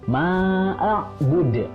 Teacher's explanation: Dan yang terakhir adalah bud, dalnya adalah qalqalah. Karena di akhir namanya adalah qalqalah kubro, jadi harus dipantulkan.